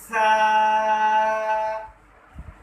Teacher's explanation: جب آپ سا کو ادا کریں گے تو آپ کی جو زبان ہے وہ آپ کے دانتوں کے اوپر ٹچ کرنی چاہیے۔ کیوں؟ اس کی وجہ یہ ہے کہ اگر آپ کی زبان दांतों को टच ना करेगी तो ये हरूफ सफ़ीर में शामिल हो जाएगा, तो इसकी आवाज़ कुछ इस तरह से निकलेगी सा।